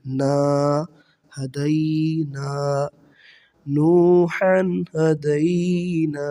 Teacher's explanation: نون الف زبر نا، نون الف زبر نا حروف مدہ ہے، زبر کے بعد الف آ گیا، یہاں پر ہم مد کریں گے ایک الف کے برابر، ٹھیک ہے جی، الف مدہ کے برابر نا کو لمبا پڑھیں گے۔